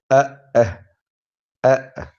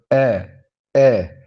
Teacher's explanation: جو حمزہ اور ہا ہے یہ انتہائی حلق، یعنی جہاں حلق کا وہ حصہ جو سینے کے ساتھ ملا ہوا ہے وہاں سے یہ ادا ہوتے ہیں، اور ان کی ادائیگی میں بہت توجہ کرنی ہے۔ حمزہ اور ہا اس کو انتہائی حلق سے ادا کرنا ہوتا ہے